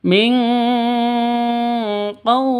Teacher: cara bacanya samar didengungkan siap-siap ke huruf qofnya ditambah dengan ng maka bacanya Ming seperti itu dibaca ing seperti itu ya khusus